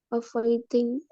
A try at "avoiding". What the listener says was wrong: Ya, avoiding ya, pakai D. Kalau tadi kamu tuh suaranya kayak pakai T ya, avoiding. Avoiding.